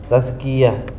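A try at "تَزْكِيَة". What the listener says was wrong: ada tasdidnya, betul, tambahin. Tazkiyatun.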